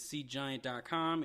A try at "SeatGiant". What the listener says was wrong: Seat, right? That sounds like you're saying sea giant. Is that what you're hearing too? It's not. It's not a monster from the sea.